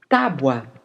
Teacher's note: Na pronúncia da palavra, o U fica mais fraco e o A mais forte, portanto, ele atua como uma semivogal.